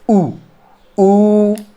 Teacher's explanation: जब होंठ गोल हो जा रहे हैं तो ये वृत्तमुखी हो जा रहे हैं